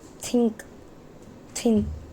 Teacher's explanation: It is voiceless dental fricative sound. Friction means while producing sound, friction occurs.